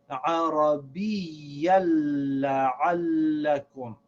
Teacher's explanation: And this word is لَعَلَّكُمْ. So we recite this lam as if it has a shad, and we drop the noon sound on this tanween.